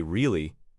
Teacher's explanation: If I say the word really with a high, sharp rise, it shows surprise or disbelief. If I say really with a low, drawn-out fall, it shows disappointment or sarcasm.